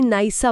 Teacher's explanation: नाही अधिक असा मध्ये अ गायब होतो आणि नाहीसा बनत म्हणजे पहिला स्वर जिंकतो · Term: पूर्वरूप संधी